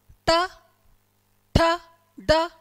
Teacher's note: ये जो ट वाली लाइन होती है ना, ये मूर्धन्य होती है।